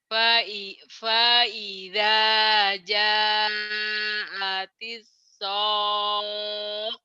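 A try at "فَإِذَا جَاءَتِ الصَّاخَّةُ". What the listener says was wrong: Bukan sokoh ya. jangan mentang-mentang lagu panjang. Faida, jangan. Faida. Faida ya. Faida ja'atis sakhah. Sakhah. Jadi kayak naik dulu gitu. Habis naik kayak kendaraan tuh. Nanjak, habis nanjak terus turun. Sakhah. Sakhah. Tapi turunnya kaget gitu ya. Naik ke gunung ke atas, dari atas turun gitu. Blok gitu. Sakhah gitu ya. Faida ja'atis sakhah.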